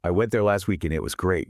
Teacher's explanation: The heavy beats are went, weak, and great.